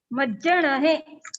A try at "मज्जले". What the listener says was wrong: नहीं, अणा अलग से, आपका पूरा अणा निकल रहा है, वहां पे आधा अणा है, तो इसको ऐसे बोलते हैं। हाँ, मज्जले, मध्याह्न बोलते हैं ना, मध्याह्न, मज्जले,